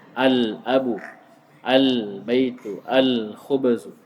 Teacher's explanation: kalau alif lam bertemu dengan huruf qamarnya alnya lamnya dibaca jelas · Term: huruf qamariyah